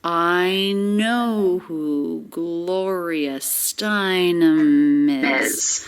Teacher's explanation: with three stressed syllables i know who gloria steinem is and all of those sounds linked together really smoothly there's no break between words · Ending M links right into the beginning vowel, I, of is. Is pronounced with a light, weak Z sound at the end.